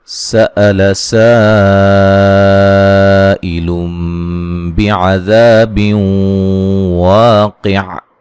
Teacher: حمزہ کو تحقیق سے پڑھیں گے، ٹھیک ہے، اس کو نرم نہیں پڑھنا۔ سین پہ جو مد ہے یہ مد واجب ہے، ٹھیک ہے۔